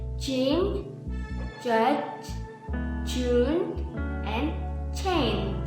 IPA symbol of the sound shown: dʒ